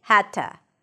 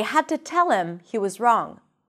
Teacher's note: The D turns into a T sound, because that's the voiceless version of the D